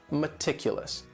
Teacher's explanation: That first syllable also has that schwa, that sound, that reduced vowel sound